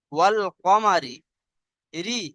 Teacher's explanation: রয়ের নিচে যখন জের আসে, তখন রটাকে বারিক পড়তে হয়, অর্থাৎ মুখ খুলে পড়তে হয়।